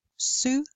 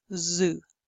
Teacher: two different phonemes in English, unvoiced s and voiced z.